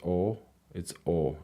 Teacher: Hungarian O is more closed